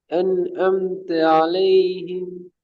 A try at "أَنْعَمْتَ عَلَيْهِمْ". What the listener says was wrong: முதலாவது ஆயின் பிள்ளை, அடுத்த ஆயின் சரி. இப்ப முதலாவது ஆயின்ட நூனோட சேர்ந்து வார ஸ்டைல் சரி. அந்த ஏட ஸ்டைலுக்கு ஆட சவுண்டு வரணும். மேல் தூக்கி நகர்ந்து தூக்கப்படாம أنعمت عليهم.